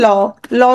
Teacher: পার্শ্বিক তার মানে কি পাশ দিয়ে কিছু বাতাস বের হয়ে যাবে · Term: পার্শ্বিক ধ্বনি